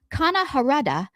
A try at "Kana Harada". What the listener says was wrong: Are you sure you pronounced that right? Sound like you said Kanada.